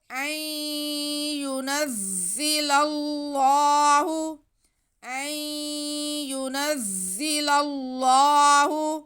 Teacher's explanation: آگے پھر لام پہ زبر ہے اور ساتھ میں حرف جلالت، اس میں اللہ آ رہا ہے، تو لام پہ زبر ہونے کی وجہ سے ہم اللہ لفظ کو موٹا کر کے پڑھیں گے